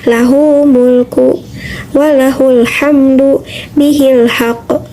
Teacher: hu atau Hi itu menghadapi huruf yang mati seperti lahumulku walahul hamdu bihil Haq robbil alamin jadi tidak ada Mad jadi tidak dipanjangkan